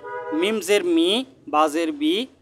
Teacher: দুই ঠোঁটের শুকনো জায়গা থেকে মিম